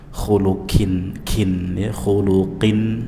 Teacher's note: qu, ya diucapkan dari pangkal lidah bagian atas, jangan dibaca di tempatnya kaf